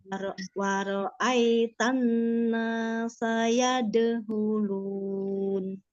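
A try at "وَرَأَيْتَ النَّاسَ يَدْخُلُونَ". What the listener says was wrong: Itu bukan hulun, tapi khulun kho ya. Yadkhulun. Yadkhulun. Cara mengucapkan huruf kho itu ngoroknya sedikit ya, tidak berlebihan juga, nggak boleh. Jadi kayak antara hak dengan kho ngorok gitu ya.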